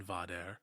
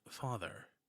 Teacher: the dental t sound in pater arises as a d sound in vader, and the th sound in father